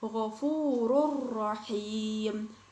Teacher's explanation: Contohnya ghafurur rahim. Nah, jadi dhammatain pada huruf ro bertemu dengan ro, maka huruf ro yang kedua itu dibaca seperti bertasydid. · Nah, idgham bila gunnah ini kebalikan dari idgham bi gunnah. Jadi ketika membaca huruf idgham bila gunnah, kita tidak dengan berdengung. Hurufnya ada dua, yaitu lam dan ro.